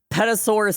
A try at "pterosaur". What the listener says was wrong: You mean a pterosaur? Yeah, you don't pronounce the P.